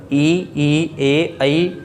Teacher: तो ये जीभ के आधार पर हो गए अग्र स्वर ई, ए, ऐ